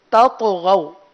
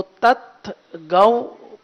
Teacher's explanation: طا پر قلقلہ کریں گے، طا حروف مستعلیہ میں سے اس کو پر بھی پڑھیں گے، تو تت گو پڑھنا یہ غلط ہے.